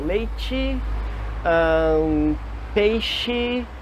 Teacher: o I curto que soava mais como E. Exatamente como os Es do português acabam no final.